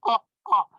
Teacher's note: It's a glottal stop in the throat when I pronounce it.